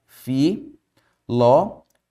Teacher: Opa, antepenúltima sílaba acentuada. Palavra o quê? Proparoxítona.